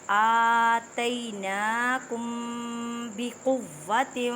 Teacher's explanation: میم ساکن کے بعد جو ہے با ہے، اب یہاں پہ اخفاء شفوی کا قاعدہ کریں گے، مینس کہ گننا کرنا ہے۔